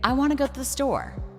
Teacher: The important words are want, go, store. The smaller words are I, to, the. A native speaker may say, I want to go to the store.